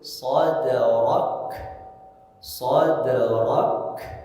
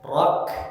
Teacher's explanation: Karena kaf itu punya sifat hamas, dia mengalir nafas. Maka ketika membaca kaf ketika sukun sadrak, sadrak.